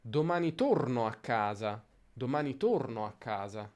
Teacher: si allunga sempre la a di casa perché è l'ultima parola della frase